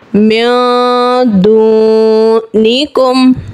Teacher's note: यहाँ पे नून साकिन के बाद दाल है, हुर्फ़े इक़्फ़ा का कायदा है, एक अलिफ गुन्ना करेंगे और यहीं पर ही वाव साकिन है और इससे पहले पेश है यानी वाव मद्दा का कायदा, एक अलिफ खींच के पढ़ेंगे। यानी एक अलिफ इक़्फ़े का हम गुन्ना करेंगे और एक अलिफ वाव मद्दा का हम खींचेंगे